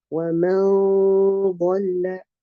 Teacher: I'll raise the back of my tongue and get the gunna heavier. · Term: heavy gunnas